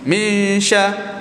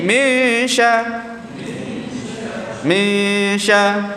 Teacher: Maknanya nun yang mati itu kita bersedia untuk masuk pada shin. Bunyi dia akan jadi hampir kepada masuk pada shin.